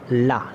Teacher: ला बोलते हैं तो जीभ जो अपनी ऊपर वाले दांतों में लगती है